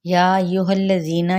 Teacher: یا کو 4 حرکت لمبا کریں گے اور ایھا الذین ہا کی زبر کو لام کے ساتھ ملائیں گے، لام کی حرکت کو لمبا نہیں کریں گے۔